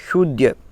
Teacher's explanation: मूर्धन्य शकार बोलेंगे शूद्य